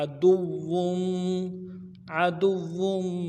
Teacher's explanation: लकुम अदुव्वुम, अदुव्वुम, आइन को मोटा अदा करना है, दाल को वाव के साथ मिलाना है, वाव के ऊपर तशदीद है, वाव मद्दा भी है, खींचेंगे भी और तशदीद भी है, ज़ोर भी लगाएंगे और आगे वाव के तनवीन को मीम के साथ मिलाएंगे।